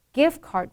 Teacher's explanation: The ending has a D, but you don't explode it.